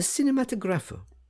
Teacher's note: gave the word the Italian pronunciation, with the accent on the 4th syllable